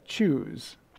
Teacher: kind of starts off with a blockage and it's very similar to a to a sh sound